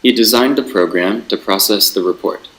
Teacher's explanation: Design is stress, program is stress, process is stress, and report is not stress here. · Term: sentence stress